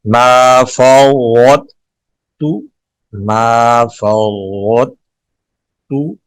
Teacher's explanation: پہلے طا کو ادا کریں گے موٹا پھر تا کو باریک ادا کریں گے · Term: ادغام متجانسین ناقص